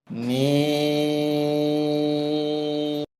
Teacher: এই হরফটি বলতে উভয় ঠোঁট মিলিয়া শুরু হবে, উভয় ঠোঁট মিলিয়া শেষ হবে। 4 আলিফ পরিমাণ লম্বা হবে, ওই সময়টা মুখ খুলে থাকবে।